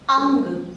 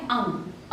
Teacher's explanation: इसकी साउंड हमें नाक से सुनाई दे रही है